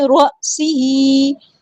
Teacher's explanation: را سی ہی، را ہمارا ہیوی لیٹر پورا ادا کریں گے، سین باریک لائٹ لیٹر ہے، سین میں سیٹی ظاہر ہوگی